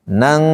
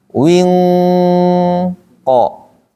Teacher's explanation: Apabila nun mati dan tanwin bertemu dengan koka, maka bunyi engnya itu harus eng.